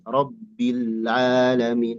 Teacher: Nah, itu enggak rilbil bil. Jangan ada penekanan karena lamnya sukun bukan tasdid.